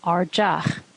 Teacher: In a slender context, it sounds like J